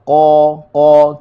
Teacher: huruf qaf, qa, kita ambil daripada pangkal lidah. Okey, qa huruf yang tebal.